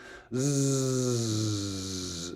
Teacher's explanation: that sound is different z z it's like a zed sound it's a buzzy sound technically we say it's voiced